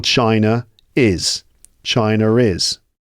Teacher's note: this intrusive R makes the transition between the two vowel sounds smoother and more fluent.